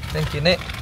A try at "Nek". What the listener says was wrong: Enggak, jangan Nek gitu. Jangan ada K-nya.